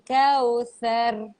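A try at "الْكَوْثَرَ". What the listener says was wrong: Thar. Tebal sikit roh. Thar.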